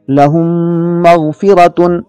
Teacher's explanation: اس کی مثال ملاحظہ ہو، لہم مغفرۃ، لہم میں میم ساکن ہے، اس پر جزم ہے اور اس کے بعد بھی میم آ رہا ہے، لہذا پہلا میم دوسرے میم میں مکس ہو گیا، ادغام ہو گیا اور ہم نے اسے غنے کے ساتھ پڑھا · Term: ادغام مع الغنہ